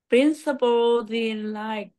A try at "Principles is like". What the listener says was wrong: Sau chữ G nó có một chữ Z nữa. Đừng có bỏ. Bỏ là thầy cô nhận ra ngay à.